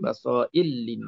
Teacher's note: Basaira linnas idgham kabir. Ra bertemu dengan lam.